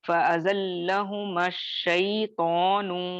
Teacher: جو پہلا الف مدہ ہے یعنی الف کا جو ساکن ہے مدیہ لیٹر کا سکون ہے اس کو ہم نکال دیں گے، حذف کر دیں گے، غائب کر دیں گے، نہیں پڑھیں گے، بلکہ جو میم کے اوپر زبر ہے فتحہ ہے اس کو شین سے ملا کر ڈائریکٹلی پڑھیں گے